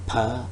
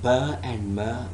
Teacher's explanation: per which is voiceless sound as in pale or in bur and mer which are voiced as in bay and may